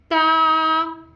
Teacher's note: ता जबान की नोक और ऊपर के दांतों की जड़ से अदा होता है।